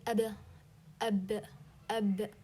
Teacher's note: you closed the two lips when you say ab. Okay, on one another, need more pressing than the letter meme. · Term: the ba